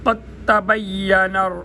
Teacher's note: قاف یہ موٹا قاف ہے، اس کو تعلق کے نرم حصے سے ادا کریں گے۔ قد تبین، تا کے اوپر شد ہے، یہ جو 3 کنگروں والی ہے اس کو شد بولتے ہیں۔